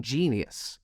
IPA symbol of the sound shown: ʤ